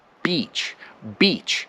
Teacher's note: first of all the b in beach pops